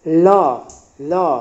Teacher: अब देखेंगे अंतस्थ व्यंजन य र ल व, बोल के देखेंगे य य य, ये जो है तालु, जीभ की हरकत को देखिए, र र बोलेंगे जीभ ऊपर टच कर रहा है ऊपरी जबड़ों में, यानी कि मूर्धा। ल ल आपका जीभ दांत की ओर जा रहा है, दंत।